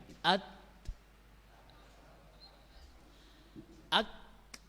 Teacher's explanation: Pita suara ini keluar tertahan oleh makhraj ta dan kaf. Suaranya tertahan oleh ta dan kaf. At tertahan bukan suaranya, tapi ketika kita berhenti at, ini ada sesuatu yang ngeganjal. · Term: sifat syiddah